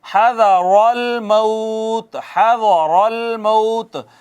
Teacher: را مفتوح ہے اس وجہ سے پر پڑی گئی ہے